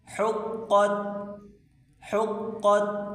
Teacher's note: بڑی کاف اس کو موٹا کر کے پڑھیں۔